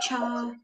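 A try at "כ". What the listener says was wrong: So with this one isn't cha, it's pronounced ka. So with is pronounced ka.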